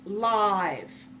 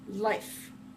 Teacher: we say it with its full long sound lie and we lengthen it a bit